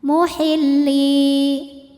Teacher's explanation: Sebab huruf ini adalah huruf mad, huruf ya sukun. Ya sukun didahului kasrah maka panjang dua harakat. Muhilli. Namun pada kalimat ini dibaca dua harakatnya hanya saat berhenti saja. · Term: mad thobi'i